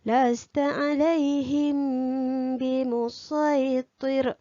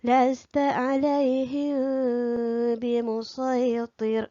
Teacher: Melafazkan sebahagian huruf mim sakinah, tidak merapatkan bibir sepenuhnya dan dengung dengan kadar 2 harkat. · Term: ikhfa syafawi